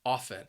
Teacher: you're not going to hear that T. It is a silent letter, a silent T, often. It is a word that I'm being very serious right now, that I use quite often.